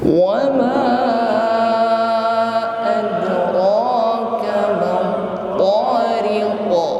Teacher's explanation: huruf qaf adalah huruf qalqalah yang berada, yang posisinya di akhir ayat, maka disebut dengan qalqalah kubra. Bunyi pantulannya tampak lebih kuat atau lebih jelas.